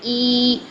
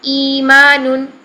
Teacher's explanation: اب دوسرے حمزہ کو ہم نے جو چینج کرنا ہے حرف مدہ سے پہلے حمزہ کی حرکت کے مطابق کرنا ہے۔ پہلے حمزہ کے نیچے کسرہ ہے تو اس کو 2 حرکات لمبا کر دیں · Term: یا مدہ